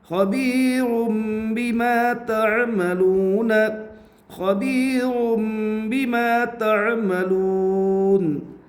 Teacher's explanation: رائے ساکنہ سے پہلے یا ساکن ہے اس لیے رائے ساکنہ باریک ہوگی